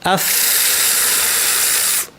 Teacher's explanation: দাঁতটা নিচের ঠোঁটে এবং বলা হয় বা মিন বাতনিশ-শাফা, মানে বাতিনুশ-শাফা, ঠোঁটের ভিতর থেকে। আফ, ফ্যাস ফ্যাসে আওয়াজ, প্রচুর বাতাস, প্রচুর আওয়াজ। আফসাদুহা আফ আফসাদুহা, হ্যাঁ, এটা হচ্ছে ফা।